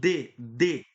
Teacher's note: C, os dentes se tocam C, C. O D, D, a língua toca no dente e tem essa obstrução do ar aí para formar um novo som